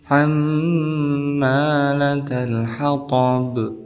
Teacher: Kemudian di sini hamma ada huruf mad tabi'i sebelumnya berharakat fathah, maka kita hukumi sebagai mad tabi'i. Kemudian mimnya juga bertasdid, maka kita hukumi sebagai gunnah musyaddadah, maka dibacanya dengung